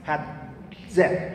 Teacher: Bueno, las africadas tenían siempre esos dos momentos, de modo que una Z era un momento de detención, oclusivo, y un momento fricativo, sonoro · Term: sonido africado